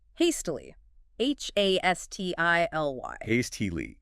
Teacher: 3 syllables. Stress on the first.